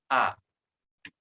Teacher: Dibacanya langsung, tidak boleh naik ke hidung atau di ujung tenggorokan. Suaranya hanya satu huruf A berada di pangkal tenggorokan. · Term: harokat A